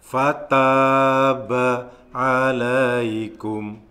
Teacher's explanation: Yang perlu diperhatikan, ada mat layin. Alaikum, panjangnya 2 ketukan.